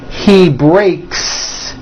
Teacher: the S you add also remains unvoiced